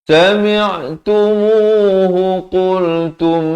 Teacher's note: Di sini mim mati bertemu mim, 2 harakat dengung.